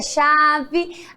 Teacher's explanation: A chave termina com E, porém tem o som de I.